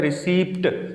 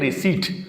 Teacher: اس میں پی نہیں پڑھیں گے